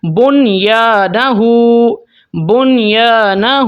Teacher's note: نون کے اوپر ہم اظہار کریں گے، غنہ بھی نہیں کرنا۔